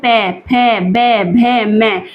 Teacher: तो ये हमारे किससे बोलते हैं? ओष्ठ से बोलते हैं। ओष्ठय व्यंजन है।